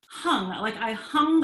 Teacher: the soft palate comes up and the tongue comes up to the soft palate mm-hmm and it gives us this slightly resonant slight and snot